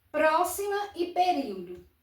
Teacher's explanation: a sílaba tônica é a antepenúltima. Período, a sílaba tônica é a antepenúltima.